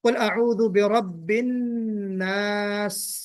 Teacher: सीन पर आवाज यकलख्त बंद नहीं हो जानी चाहिए, कंटिन्यू रहना चाहिए